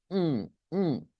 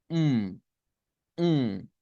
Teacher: la M es nasal significa que para hacer la m siempre ponemos los labios juntos pero necesitamos hacer un sonido con la nariz